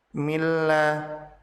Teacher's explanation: Nun mati bertemu dengan lam, maka nun dilebur ke huruf lam tanpa ditahan dan tanpa disertai dengan gunnah. Hukum bacaan ini disebut sebagai idgham bila gunnah, yaitu meleburnya nun sukun ke dalam lam tasydid tanpa disertai dengan gunnah.